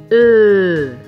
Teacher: La langue est en avant, la bouche est un peu plus ouverte, les lèvres sont arrondies.